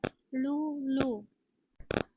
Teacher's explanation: दंत्य दंत स्थानापासून उच्चारले जाणारे स्वर